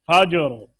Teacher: جیم میں سختی نہ ہو، قلقلہ ہے جیم میں، آواز کو نرمی کے ساتھ قلقلہ کریں